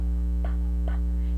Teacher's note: the phoneme pa is unvoiced because the vocal folds does not vibrate